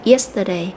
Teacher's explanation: yesterday thì chúng ta cũng nhấn vào trọng âm ở âm tiết đầu tiên của từ này